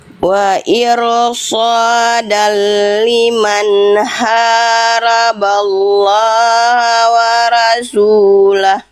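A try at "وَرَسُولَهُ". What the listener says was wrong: Bukan wara, waro. Roh huruf tebal, bukan wara. Waro. Wa rasulah.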